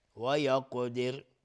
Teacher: قاف از حروف استعلاست غلیظ تلفظ میشه و اینجا قلقله میخواد